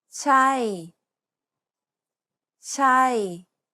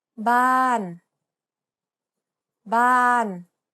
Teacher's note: It starts high and then falls to a low part of your range. บ้านบ้าน Imagine a heavy weight is gradually pulling you down. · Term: falling tone